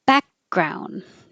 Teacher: Put your tongue in the K position. Back, but don't release the air. Back. Hold it, and then you're already ready for the G.